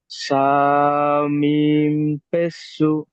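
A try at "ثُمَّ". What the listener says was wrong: না, সু না। সা, আমি বলেছি মিমের উপরে তাস দিতে হলে গুণনা হবে। মিম পেশ সুম। বানান করেন, বানান করেন, মিম জাবার মা। হ্যাঁ, একটু গুণনা করবেন, তাসদিদ এসেছে মিমের উপরে।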